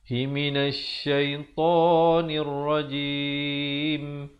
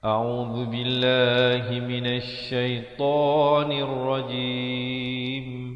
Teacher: Di hujung baru tutupkan rapat mulut bagi menyempurnakan bunyi huruf mim.